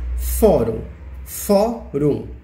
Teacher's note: Tem 2 sílabas, a mais forte é o fó, que inclusive leva o acento. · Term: sílaba mais forte